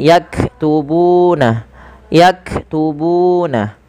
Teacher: panjangkan bu sepanjang dua harakat karena ia mad thabi'i